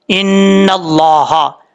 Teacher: اس کے بعد ہے ان اللہ، حمزہ زیر نون زیر، ان حمزہ زیر نون، ان نون زبر لام، نل لام کھڑا زبر لا، ہا زبر ہا، ان اللہ، نون کے اوپر شد ہے، غنہ کریں گے ایک الف کی مقدار. آگے لفظ اللہ ہے، لفظ اللہ سے پہلے زبر ہے نون کے اوپر، اس لیے لفظ اللہ کو پر پڑھا جائے گا، اور بیچ میں الف اور لام کو چھوڑ دیں گے، نون کو جس لام کے اوپر شد ہے اس کے ساتھ کنیکٹ کیا جائے گا، ملایا جائے گا.